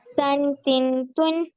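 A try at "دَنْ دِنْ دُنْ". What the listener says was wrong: അല്ല, ഇത് ലെറ്റർ ദാലല്ലേ? അപ്പൊ ദൻ.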